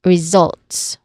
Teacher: We say it as results with emphasis on zolts.